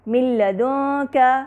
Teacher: نون ساکنہ کے بعد لام ہے، مل کی آواز آ رہی ہے، من کے بعد لام ہے جو کہ ادغام کامل بلا غنہ کا حرف ہے.